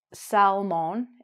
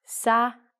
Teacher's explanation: we have a silent l, and as our lesson will follow, we don't say: mon, we say: min.